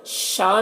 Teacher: शाह में मद्दे मुत्तसिल से 3-4 अलिफ के बराबर खींच कर पढ़ेंगे